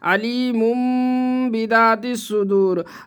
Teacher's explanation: میم کے بعد با ہے اس لیے اقلاب ہوگا اخفا ہوگا، گنہ کر کے پڑھیں گے، ناک میں آواز کو چھپائیں گے